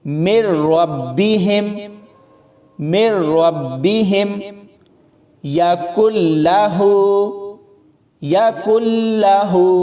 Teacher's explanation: یعنی لفظوں کو ملاتے ہوئے غنہ نہیں ہوگا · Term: ادغام بلا غنہ